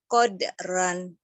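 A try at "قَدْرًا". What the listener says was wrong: Ron lebih tebal. Qadron. Kalau ran kurang tebal. Ron. Coba ron.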